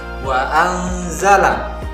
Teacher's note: maka huruf nun dibaca dengan samar dan mendengung mendekati huruf zain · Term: hukum bacaan ikhfa